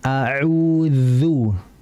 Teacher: Ujung lidah yuhadhihi mina atsanaya al-ulya, diapit oleh ujung gigi seri atas.